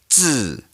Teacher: Z in Chinese sounds more like a DZ sound in English. It's a little more explosive